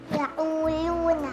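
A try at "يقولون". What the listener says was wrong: Enggak lu. Lu itu berarti bagian besar dari pinggir lidah itu diambil le. Nah, harusnya dia hanya pinggir banget. Jangan ke tengah, betul ya. Jadi hanya pinggir saja. La yang le.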